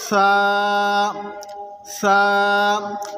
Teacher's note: سا کو زبان کا سرا اور اوپر کے دانتوں کے اندرونی کنارے سے ادا کرتے ہیں تو اپنے زبان کے سرے کو اوپر کے دانتوں کے کنارے